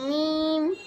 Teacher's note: মিম 2 ঠোঁটের শুকনা অংশে মিম